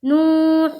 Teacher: نوح، نون واو پیش نو، ہا پیش ہو، نوح نو، واو ساکن سے پہلے پیش ہے، واو مدہ ہوگا، واو مدہ کو 1 الف کے برابر کھینچ کر پڑھیں گے، جیسے نو حو، ہا کے اوپر پیش کی حرکت ہے، پیش کو جلدی پڑھے، تھوڑا بھی نہ کھینچیں، معروف پڑھیں، مجہول آواز سے بچیں،